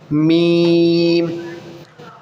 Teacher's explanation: लाम, मीम, ये भी हरूफ शफ़विया में से है। मीम, दोनों होंठ टच होंगे और होंठों का जो ये ड्राई वाला हिस्सा होता है वहाँ से निकलेगा